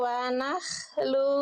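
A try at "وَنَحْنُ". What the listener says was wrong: Nahnu, bukan nahlu. Wanahnu bukan wanahlu. Tadi saya dengar kayak nahlu. Nahnu ya.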